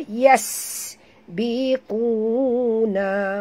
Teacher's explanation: bunyikan sofir pada huruf sin yang mati